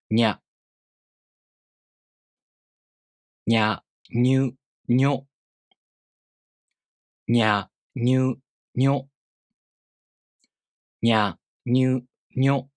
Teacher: try to add the [j] sound, a very short one, between the [ɲ] sound and a vowel